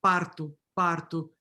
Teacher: the flap parto, parto, you have mostly in the city of São Paulo and in southern Brazil